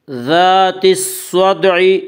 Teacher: الف اور لام کو نہ پڑھیں گے بلکہ بعد والے حرف سے ملا کر پڑھیں گے۔ صاد یا حروف شمسی میں سے ہے اور صاد سے پہلے الف اور لام آ رہے ہیں، اس لیے الف اور لام کو نہ پڑھیں گے بلکہ بعد والے حرف سے ملا کر پڑھیں گے۔